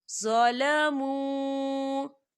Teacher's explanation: واو ساکن سے پہلے پیش ہے اور اس پہ مد بھی ہے، تو ہم اسے 4 حرکت کی برابر کھینچ کے پڑھیں گے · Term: واو مدہ